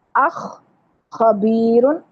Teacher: خا جو ہے وہ گلے کی خراش کے ساتھ ادا ہوگا